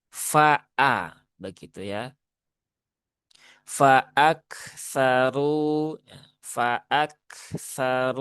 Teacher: hamzahnya harus ditahqiqkan ya, diperjelas hurufnya, pisahkan dengan huruf fa ya.